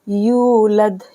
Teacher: लम यलिद, लम लाम मीम जो लम, या लाम दाल जलिद, लम यलिद वलम यूलद, लाम को मीम के साथ मिलाएंगे, वलम यूलद, या वापस यू को खींचेंगे हम 2 सेकंड के लिए, यूलद, यहाँ पर कलकला होगा, लम यलिद वलम यूलद वलम यकुल लहू कुफुवन अहद।